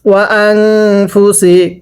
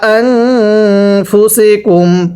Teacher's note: নুন সাকিনের মধ্যে গুন্নাহ করব, কারণ নুন সাকিনের পরে ফা ইকফার হরফ গুন্নাহ করে পড়তে হয়।